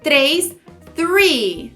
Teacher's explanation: Quando a gente fala o número 3, a gente tem que tomar cuidado por causa do TH, que vai ter esse som de Você coloca a língua atrás dos dentes e você assopra, ficando 3, 3.